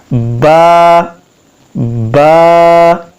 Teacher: یہ جو ہونٹوں کا تر حصہ ہے وہ آپس میں ملنے سے یہ با ادا ہوتا ہے